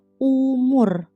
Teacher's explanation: Huruf U diucapkan dengan lidah tidak menyentuh langit-langit mulut atau menggantung di tengah dengan bentuk mulut bulat.